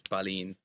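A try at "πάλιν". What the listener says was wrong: So not palin, palin. Because the stress is on the first syllable.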